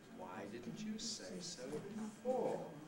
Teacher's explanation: it's the emphatic rising head starts at the bottom goes up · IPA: waɪ dɪdnt ju seɪ səʊ bɪfɔː